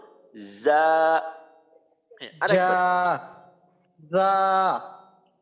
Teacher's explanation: জিহ্বার আগাটা সামনের নিচের যে দাঁত আছে সামনের নিচের দুই দাঁত ওই দাঁতের পেটের পেট বরাবর লাগাবো এবং দাঁতের সাথে উপরের দাঁত নিচের দাঁতের সাথে যদি লাগাইয়ে উচ্চারণ